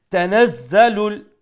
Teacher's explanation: za has a shadda means double letter double sound, and za is pronounced with power